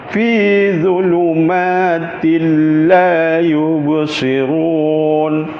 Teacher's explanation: Sepatutnya ta itu baris dua sengit mesti dibaca dengung, tetapi bila untuk lam dan ro dia masuk tanpa dengung.